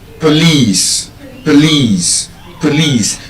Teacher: So, there's a schwa sound in the first syllable. So, it's not po, it's pro.